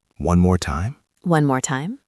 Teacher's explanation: Notice that my voice goes up at the end.